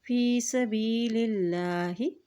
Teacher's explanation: اللہ کے نام سے پہلے زیر آ گیا ہے تو اللہ کا نام یہاں پر باریک عطا کیا جائے گا